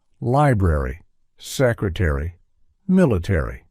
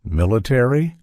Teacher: In American English, each component of the ending ARY is pronounced.